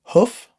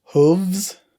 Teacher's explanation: e is silent for some reason and then hoof versus Hooves so for this one the F changed to a v sound and we added e s